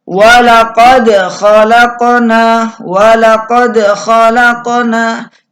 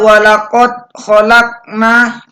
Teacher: Contoh yang kedua adalah walaqad khalaqna, walaqad khalaqna. Jadi dal sukun pada walaqad ini harus dipantulkan. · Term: qalqalah surah